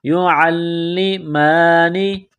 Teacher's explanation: میم کے اوپر کڑا زبر ہے، ایک الف کے لمٹ میں کھینچنا ہے